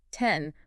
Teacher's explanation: My tongue is tapping the roof of my mouth right behind my front teeth. Right. That area is called the alveolar ridge. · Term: alveolar sound